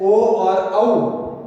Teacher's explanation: इसका उच्चारण है कंठोष्ठ से होता है, इसलिए इन्हें हम कंठोष्ठीय जो स्वर कहते हैं।